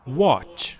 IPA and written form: wɑːtʃ (watch)